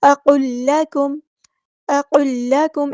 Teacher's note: اقل لکم، قاف یہاں پہ پورا ادا کرنا ہے، اور یہاں پر لام ساکن کے بعد لام آیا ہے تو ادغام کامل ہو رہا ہے، تو پچھلا لام بالکل ڈراپ کر دیں گے، اگلا جو لام مشدد ہے اس کو ادا کریں گے. اقل لکم، اقل لکم ایسے پڑھنا ہے.